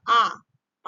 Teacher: आ जो आपका पीछे से बोला जा रहा है तो आ हो जाएगा आपका पश्च स्वर